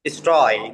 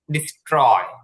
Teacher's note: যে টিটা আছে সেটা ট এর মতন উচ্চারণ হবে, এটা ঠ হবে না।